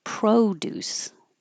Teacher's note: Produce as a noun, stress on the first syllable, and it's an O.